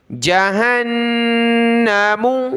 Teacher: نون کے اوپر تشدید ہے تو ہم نے غنہ کرنا ہے، یعنی ناک میں آواز پیدا کرنا، ساؤنڈ بنانا ناک میں، اس کو کہتے ہیں غنہ۔